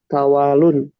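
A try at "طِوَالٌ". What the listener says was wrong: Ti. Pokoknya di kasrah. Tiwalun.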